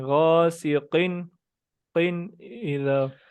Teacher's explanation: قاف کو اور تھوڑا موٹا کریں